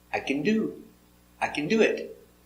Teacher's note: the action is the more important word, not the helper. The action do has the stress.